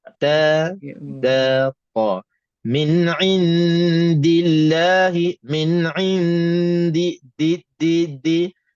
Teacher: setiap kali kita sebut 3 huruf ni, kita pastikan tepi lidah bahagian depan sentuh belakang gigi atas kita